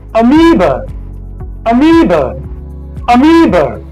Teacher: This letter A is not pronounced A, it is pronounced very weak, followed by the long E, the vowel E. Then we have another weak syllable, So it's not amoeba.